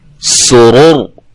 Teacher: اس کو ہم نے موٹا کیوں پڑھا ہے کہ یہ را کے اوپر جزم آ گئی ہے وقف کے دوران، را ساکن ہو گئی ہے، اور را ساکن سے پہلے حرف پر کیا ہے؟ پیش ہے، تو اس لیے را موٹی ہو گئی ہے